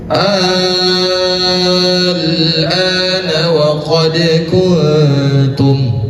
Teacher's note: Kemudian setelah hukum mad thabi'i itu bertemu dengan huruf sakinah lam. Cara membacanya dengan panjang enam harakat. Enam harakat. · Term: mad lazim mukhaffaf kilmi